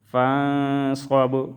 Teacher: فا نون زبر فان، صاد با زبر صوب، فانصب، نون میں اخفا اور با میں قلقلہ